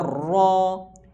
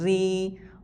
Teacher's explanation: رو کو بھی پر پڑھیں گے یعنی موٹا پڑھیں گے، اگر زیر آئے گی پھر باریک پڑھیں گے